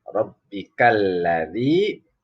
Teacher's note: ini ada kasroh ketemu ya mati, namanya mad tabi'i atau mad asli